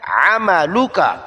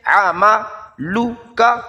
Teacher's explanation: عین وسط حلق سے، عملک، ان کو لمبا نہیں کرنا.